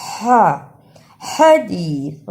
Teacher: حدیث، ہاں کی صحیح آواز نکالنا۔ ہاں کو نکالنے کا طریقہ، حلق سے آواز کو رگڑ کر نکالنا ہے۔